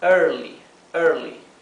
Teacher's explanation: Tenemos early, early, ¿sí? Traten de pronunciar la R como la R inglesa, con la lengua bien hacia atrás, atrás del paladar